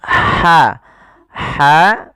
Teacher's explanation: jangan dibaca dengan ha besar jangan tasqil hartsa tapi dia hartsa huruf ha yang kecil itu dikeluarkan dari tenggorokan tengah tengah tenggorokan